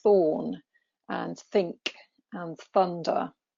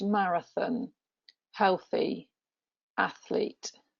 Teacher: you've got a voiceless th it's quite whispery